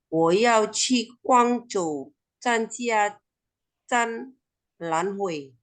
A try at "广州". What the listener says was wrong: ，OK，广州 nadanya ya，我要去广州。